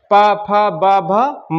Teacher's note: तो इन होठ होठों का क्या होगा? आपस में चिपकाव होगा। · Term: ओष्ठ व्यंजन